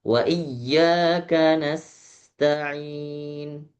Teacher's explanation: Biarkan hamasnya huruf sin biar dulu keluar desisnya.